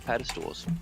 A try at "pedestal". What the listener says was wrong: pedestal, right? Not pedal stool?